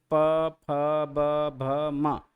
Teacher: अगर हम प फ ब भ म बोलेंगे तो ओष्ठ हमारा पूर्ण रूप से मिलेगा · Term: प वर्ग